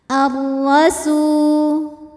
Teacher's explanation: Huruf ra dibunyikan secara tafkhim karena ra-nya berbaris fathah, maka dibacanya tebal.